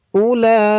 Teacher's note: তো বলুন আমার সাথে উলা এখানে চার আলিফ টান হবে। মধ্যে মুত্তাসল চার আলিফ টান